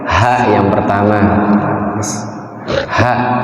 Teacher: Ha ini sifatnya hamas sama rokhawah, ngalir suaranya.